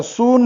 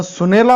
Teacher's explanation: सुने या सामान्य रूपाला ला हा प्रत्यय लागला, म्हणून सु मध्ये काय बदल झाला, तर उपांत्य अक्षर जे दीर्घ होतं ते ऱ्हस्व झालं. कारण उच्चार सून म्हणताना आपण सु दीर्घ उच्चारतो, पण सुनेला म्हणताना सु त्यातला ऱ्हस्व उच्चारतो